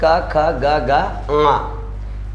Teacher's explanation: तो देखो हमने क्या कहा है कि क वर्ग जो है इसका उच्चारण स्थान क्या माना गया है? कंठ माना गया है